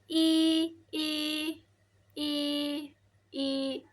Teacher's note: I itu termasuk vokal depan tinggi